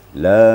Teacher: Yang pertama ya, mat di awal. La itu kan mat jaiz munfasil. Jadi 5 ketuk kan. La selama itu.